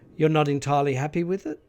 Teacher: there is a rising pitch Contour which begins on the first syllable of the word happy with the high pitch continuing until the end of this response